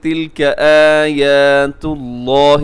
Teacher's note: لفظ اللہ کو موٹا پڑیے گا، اس سے پہلے پیش ہے